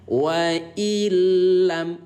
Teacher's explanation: Ya, maka lam yang bertasydid bacanya dengan lebur saja. Bacanya dengan lebur. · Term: idgham bila gunnah